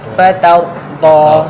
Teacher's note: Ra yang mati kalau sebelumnya berbaris fathah, berbaris atas, dia tak dapat tidak mesti kena tebal.